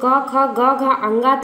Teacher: क वर्ग में जो क ख ग घ अंगा था वो किससे उच्चरित हो रहा था, कंठ से, मतलब गले से।